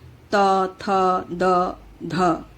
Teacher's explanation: तो दंत्य में स्पष्ट है कि जिन व्यंजनों का उच्चारण दंत पंक्ति से होता है उन्हें दंत्य व्यंजन कहते हैं। इसके उच्चारण में जिह्वा की नोक ऊपर की दंत पंक्ति का स्पर्श किया करती है।